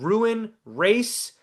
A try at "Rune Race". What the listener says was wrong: I think it's rune race, like a rune. Rune, not ruin, like Rune, like prune.